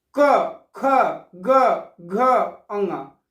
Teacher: जिन व्यंजन ध्वनियों के उच्चारण में जिह्वा के पिछले भाग से कोमल तालु का स्पर्श होता है, वे कोमल तालव्य कंठ ध्वनियां कहलाती हैं। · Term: कोमल तालव्य व्यंजन